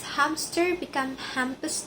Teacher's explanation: Some speakers insert a B to ease the transition between M and S.